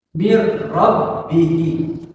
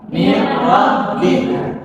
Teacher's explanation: Kalau nun mati bertemu dengan lam dan ro, maka dibacakan tidak pakai gunnah. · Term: idgham bila gunnah